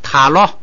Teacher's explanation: 个音节的时候啊，中间必须高，或者你最多是平，中间不能那个低，这样来记。这个中间高的那个调，你就老记得那个，找不着了就就用这个我明白了就用这个来找那个老记住这个藏语，这是它的一个突出特点。这样的话你一记中间高，那就是什么呀？前不降后不升，前边不准出现降调，后边不准出现升调。好，咱们来看具体的啊。这个就是第2音节，就是什么呢？说不升，就是说后边啊低调变高调，就是如果后不升，如果后边有升调怎么办呢？变高平调。咱们来读啊，塔罗， 罗本来是升调，但是在第2音节后边不许升，那它就只好变成平调了 。后边啊，裸吗？你不能罗麻，那就成了读2个单词了，后边不能升，所以呢就读这个平声。再来一个